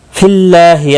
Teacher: اللہ کا لام زیر کی وجہ سے باریک پڑھا جائے گا